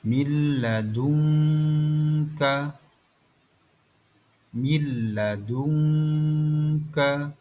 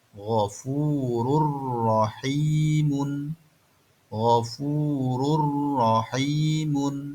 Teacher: idgham bila gunnah, memasukkan tanpa suara dengung